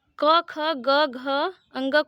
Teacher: कवर्ग बोलते हैं इसका उच्चारण स्थान कंठ है